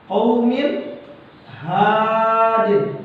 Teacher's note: tanwin kasratain bertemu dengan huruf h, maka dibaca izhar, tidak menggunakan dengung.